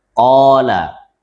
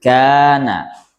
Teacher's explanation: Kalau didahului qaf jadi tebal, qala. Kalau didahului kaf jadi tarqiq, tipis, kana.